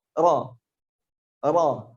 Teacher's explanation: Kalau huruf r kita takrirnya kuat, r itu takrir, banyak pengulangan, banyak getarannya r. Tapi kalau huruf ra getarnya sedikit saja, bahkan ada yang menyebut bergetarnya sekali saja